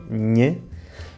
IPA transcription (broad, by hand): ɲ